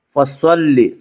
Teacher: صاد کو پر پڑھیں گے، صاد حروف مستعلیہ میں سے ہے۔